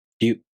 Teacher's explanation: To pronounce Ryu, the tongue moves from the [ɾʲ] sound to the [ɯ] vowel.